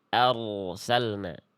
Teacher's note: Angkat pangkal lidahnya biar rnya tebal di situ ya. Boleh Bunda. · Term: ro sukun